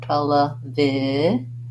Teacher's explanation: It sounds like an sh, but with our voice on. · So sometimes I write that as a zh. Basically, you want to have the sh mouth position, like shh, and turn your voice on. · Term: zh sound